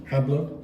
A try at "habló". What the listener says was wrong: So A is always ah. H is always silent. I thought you were saying ha. And then where's the stress go? Right.